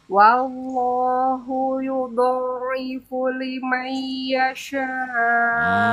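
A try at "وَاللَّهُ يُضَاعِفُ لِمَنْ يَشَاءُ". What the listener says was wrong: Kurang lama. Liman yasha.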